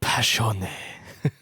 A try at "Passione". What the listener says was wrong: Sorry, there's an E at the end of it.